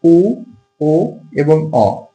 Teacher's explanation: এখানে যেটা আছে উ, ও এবং অ, এটা হচ্ছে পশ্চাৎ স্বরধ্বনি